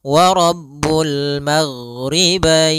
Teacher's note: ghain adalah sifatnya rokhawah. Rokhawah itu mengalirnya suara